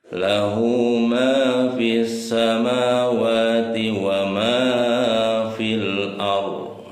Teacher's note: Ya, ini mad silah qasiro. Berapa panjangnya? Panjangnya 2 harokat. Lahu ma. Nah, di atas huruf mim ada tanda fathah, di depannya ada huruf alif.